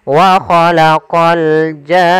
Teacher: Panjangkan janya dulu 6 harokat baru masuk ke nun. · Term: mad lazim kalimi musaqqal